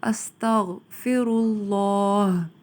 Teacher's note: سین میں سیٹی کی آواز آئے گی